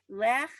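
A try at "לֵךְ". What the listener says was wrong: Lech. No, there's no chaf.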